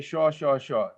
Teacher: Bengalis will pronounce it all with the sha sound, and they'll say shaw, shaw, shaw.